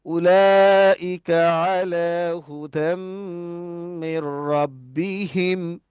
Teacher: আর এই যে মিম সাকিনটা আছে, এই মিম সাকিনটা গুন্না হয়ে গেছে। এই মিম সাকিন গুন্না হবে না, এই যে রব্বি হিম, যখন আপনি দাঁড়াচ্ছেন, হিম অনেকক্ষণ বলে ফেলছেন, তো গুন্না করার দরকার নেই এখানে।